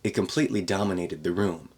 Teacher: It completely, glottal stop T before the K in completely.